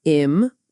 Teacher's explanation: in the word important, we stress the second syllable